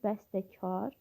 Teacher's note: Yazış və dedişində bir fərqli məqam var. Bəstəkar sözündə t samiti D samitinə keçir.